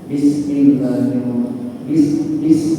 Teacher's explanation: jadi ketika huruf Sin tersebut disukun maka keluar sifat hamz · jadi ujung lidah kita ini bertemu dengan ujung gigi seri bawah ini di sini huruf Sin